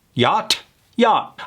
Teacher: by killing that T, we just come across as more relaxed and native